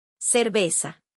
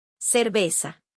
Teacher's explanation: Now listen to the smooth Mexican version with zero TH at all.